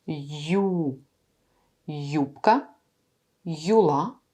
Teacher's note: c'est le son y plus la voyelle ou.